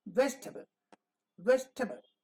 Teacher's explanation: the unaccented part is shortened in duration table table and also in force also in loudness vegetable breakfast